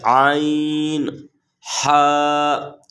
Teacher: یہ 2 حروف عین اور ہا حلق کے درمیانی حصے سے ادا ہوتے ہیں